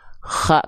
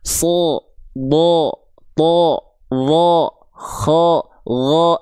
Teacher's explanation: Jadi kalau ada huruf yang karakternya tebal, ketika huruf tebal itu berharokat baris atas, karena dia tebal, bunyi vokal yang keluar bukan bunyi vokal a, tapi bunyi vokal seperti o.